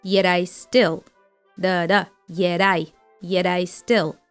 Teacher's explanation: Already familiar flap T appears in the word yet.